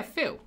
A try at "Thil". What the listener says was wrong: Not Phil, as in with a P and a H. Phil.